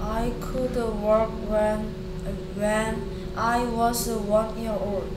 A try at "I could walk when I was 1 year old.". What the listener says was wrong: I could walk. Walk 아니고요. Work 아니고요. L 소리 안 납니다. I could walk.